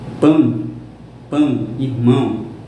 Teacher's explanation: chamado de ditongo nasal quando você falar ele pela boca, pelo nariz